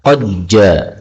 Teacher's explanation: Nah, ini boleh idgham, qad ja, sehingga dalnya lebur pada huruf jim